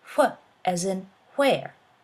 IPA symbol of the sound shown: ʍ